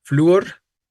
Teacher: Flúor no es un monosílabo, ¿no? Porque, ¿qué sucede entre la U y la O? Un hiato, sucede un hiato. La tónica es la débil.